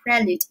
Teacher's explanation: prelude 重音在第一节